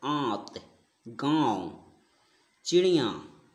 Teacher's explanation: अनुनासिक में नाक से कम एवं मुंह से अधिक सांस निकलती है।